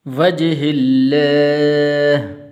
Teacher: یہ لفظ اللہ کو یہاں پر پر نہیں کرنا بلکہ باریک کر کے پڑھنا ہے.